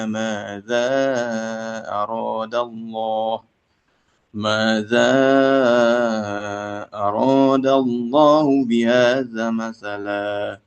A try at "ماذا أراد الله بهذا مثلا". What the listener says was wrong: Madnya. Masalah. Madnya. Bihadza masalah. Ya, 6. Tadi terbacanya pendek.